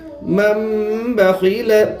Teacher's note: نون ساکن کے بعد با ہے، اس لیے نون کو میم سے بدل کر گنہ اور اخفا کے ساتھ پڑھیں گے، اس کو اقلاب کہتے ہیں۔